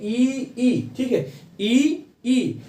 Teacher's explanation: जैसे हम उच्चारण करेंगे ई, ठीक है, ई, तो ई के उच्चारण के समय जो है जो हमारी जिह्वा है वह तालु की तरफ उठती है थोड़ा सा, और तालु की तरफ उठने के कारण जो है कि जो हमारी प्राणवायु है उसका मार्ग थोड़ा सा संकीर्ण होता है। संकीर्ण होने के कारण जो है तालु पे पड़ता है क्या, प्रेशर यानी दबाव पड़ता है। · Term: तालव्य स्वर